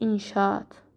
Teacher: Sonra, məsəl üçün, inşaat. Yenə də a-nın biri düşəcək, yerdə qalan a uzun tələffüz olunacaq.